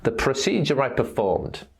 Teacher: it's called the linking R because it helps us to link one word to the next